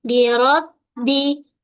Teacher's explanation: pada ba tahan suara jangan mengalir suara